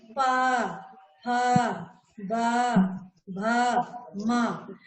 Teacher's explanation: तो आपका ओठ से टकरा रहा है, ओठ आपस में दोनों टकरा कर वर्णों का उच्चारण हो रहा है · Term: ओष्ठ